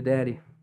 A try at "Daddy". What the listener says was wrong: You know, enunciate that D a little better.